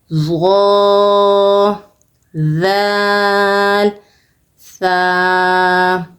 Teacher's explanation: زبان کی نوک کو اوپر کے دانتوں کے ساتھ لگا کر نہایت ہی نرمی کے ساتھ تینوں حرف ظا، ذال اور ثا کو ادا کرنا ہے۔ بیچ میں سختی اور سیٹی بالکل نہیں ہونی چاہیے۔ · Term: نرم حروف